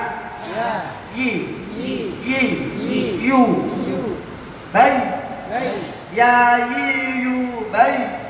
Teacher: Makhrajnya tengah lidah dan tengah langit-langit, sama seperti ya sama shin.